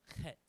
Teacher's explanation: That one, you gotta get the back of the throat. It's a guttural pronunciation. It's an H, but it's a hard H.